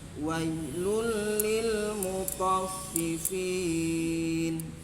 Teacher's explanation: Maka dibaca dibaca masuk dengan tidak dengung. Jadi, idgam itu artinya memasukkan bi dengan la tidak ghunah dengung. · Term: Idgham bila ghunah